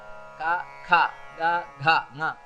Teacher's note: ಕ ಖ ಗ ಘ ನ ಕಂಠದಿಂದ ಬರಬೇಕು ಪ್ರತಿಯೊಂದು ಕೂಡ · ಪ್ರತಿಯೊಂದು ಅಕ್ಷರವನ್ನು ಇವಾಗ ಕ ಖ ಗ ಘ ङ ಕಂಠದಿಂದ ಬರಬೇಕು ಪ್ರತಿಯೊಂದು ಕೂಡ. ಅದನ್ನು ನಾವು ಬೇರೆ ಕಡೆ ಮಾಡ್ಲಿಕ್ಕೆ ಹೋದ್ರೆ ಅಕ್ಷರವೇ ಹೋಗ್ಬಿಡ್ತದೆ, ಅದು ಆ ಅಕ್ಷರ ಬರುವುದಿಲ್ಲ.